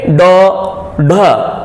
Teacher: यहां पर जीवा नोक की तरह नोक के आकार में होकर ऊपर तालू पर टकराती है बच्चों आप बोल के देखोगे ड ढ इसी वजह से यहां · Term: उत्क्षिप्त